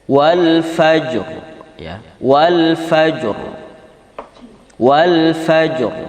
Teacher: Jadi qalqalahnya qalqalah kecil, sekalipun ra-nya tafkhim.